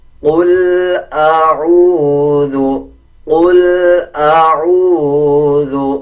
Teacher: واو کے اوپر جزم ہے، جب عین اور واو کو ملائیں گے تو 1 سیکنڈ لمبا کیا جائے گا. جب واو کے اوپر جزم آ رہا ہو اور اس سے پہلے والے الفاظ کے اوپر پیش آ جائے تو وہ حروف مدہ بن جاتا ہے اور حروف مدہ 1 سیکنڈ لمبا کر کے پڑھا جاتا ہے.